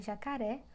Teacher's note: um Agudo indica que a vogal possui timbre aberto